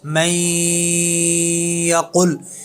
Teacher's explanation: ہم نے غنہ کے ساتھ ادغام کیا ہے، نون ساکن کے بعد یا آرت۔ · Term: ادغام مع الغنہ